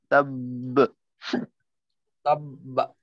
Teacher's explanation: ছাড়ার সময় মাখরাজ থেকে আলাদা হওয়ার সময় আরেকটা আওয়াজ করতে হবে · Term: কলকলা